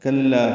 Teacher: کلا انہ کان لآیاتنا عنیدا، کلا کاف کو لام سے ملانا، لا الف مدہ مد عوض 2 حرکات لمبا کریں گے